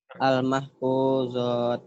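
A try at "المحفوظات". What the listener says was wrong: Panjang ya. Al-mahfuzat. Panjang. Al-mahfuzat. Jadi bukan al-mahfuzat.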